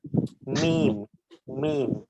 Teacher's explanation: দুই ঠোঁটের ভেজা জায়গা থেকে উচ্চারিত হচ্ছে বা মিম উচ্চারিত হচ্ছে এই মিম উচ্চারণ করতে গেলে ঠোঁটের শুকনো অংশ দুটোকে একত্রে লাগাতে হচ্ছে আমাদের যে অংশগুলো বাইরে থাকে অর্থাৎ মিম মিম ঠোঁটের বাইরের অংশগুলোকে